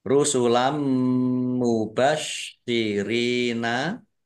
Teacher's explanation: syinnya dibaca dobel ada tasdidnya · Rusulam mubasyirina fathah tanwin bertemu dengan huruf mim, bacaan idgham bi gunnah masuk dengan mendengung, yaitu mendengung mim ditandai mimnya ada tasdidnya. Ya, mim tasdid dibaca gunnah atau mendengung ditahan biar tampak dengungannya.